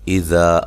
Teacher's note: حمزہ کو تحقیق سے پڑھنا ہے، ذا الف مدہ ہے۔